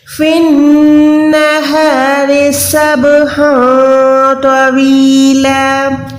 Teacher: یہ ہا جو حلق کے درمیان والا حلوے والا ہا ہے، ٹھیک ہے؟ پہلے ہاتھی والا تھا، ابھی حلوے والا ہے۔